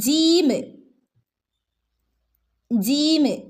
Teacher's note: നടുഭാഗം നാവിന്റെ മധ്യഭാഗം മധ്യഭാഗം എന്ന് പറഞ്ഞാൽ നാവിന്റെ നടുഭാഗവും നടുഭാഗം എവിടെയാണ് തട്ടുന്നത് മേലെ അണ്ണാക്കിന്റെ മുൻ വശത്ത് ചേർന്ന് തട്ടിയിട്ടാണ് ജീം ജീം എന്നുള്ള ശബ്ദം വരുന്നത്